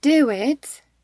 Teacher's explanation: I put w sound in between do and it to make it easy to pronounce. I don't say do it.